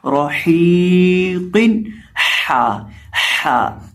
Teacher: کیونکہ را کے اوپر زبر ہے، اور آخر پہ جو ہمارے پاس قاف ہے اس کو بھی ہم نے پر کرنا ہے، اور حا کی آواز آئے گی راحیقن، حا، حا، اس کو ہم نے حلق کے درمیان سے ادا کرنا ہے، اور ایک الف کے برابر یہاں لمبا کر کے پڑھنا ہے۔